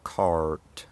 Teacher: The r is pronounced fully after a vowel